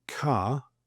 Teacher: the Brits sort of swallow the R unless followed by a vowel. The vowel could be at the beginning of the next word. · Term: nonrotic